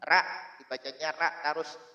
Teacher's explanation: selama ra itu kan istilahnya diucapkannya pada makhrajnya, yaitu pada ujung lidah